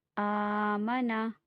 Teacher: جس پہ کھڑا زبر ہو اسے ایک الف کی مقدار کھینچ کے پڑھا جاتا ہے